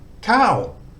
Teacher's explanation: it's got the second tone mark so high class central consonant second tone mark gives it a falling tone but it's short so we've got we've got to try and keep it short we've got to try and put energy into the start and let it fall off